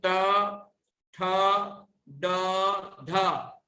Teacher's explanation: टवर्ग के वर्णों का उच्चारण करते समय हमारी जीभ की, जिह्वा की विशेष आकृति बनती है, अर्थात जीभ अंदर की तरफ पीछे को मुड़ती है।